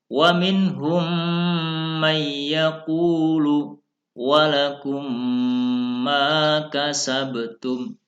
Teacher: Suara mim sukun masuk ke mim yang kedua, seakan-akan ada tasydid. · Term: idgham mimi